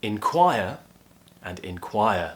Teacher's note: Both have the same sounds, both have the same stressed syllable, quire.